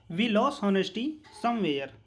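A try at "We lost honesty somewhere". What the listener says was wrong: वी लॉस्ट ऑनेस्टी फिर सांस ले ली फिर समवेयर। ऐसे नहीं होता है।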